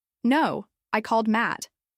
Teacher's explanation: If someone says, "Did you call Mark?" and you reply, "No, I called Matt." You're using stress to fix the name.